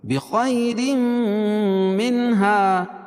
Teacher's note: را کے نیچے دو زیر کی تنوین تو را باریک ہوگی